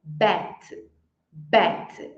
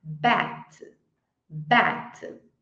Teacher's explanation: Bet é o som fechado do e